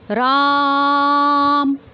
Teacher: जैसे अगर किसी को बुलाना है तो उसमें हम प्लुत स्वर का प्रयोग करते हैं, देर तक बोलते हैं, कई गुना समय लगता है।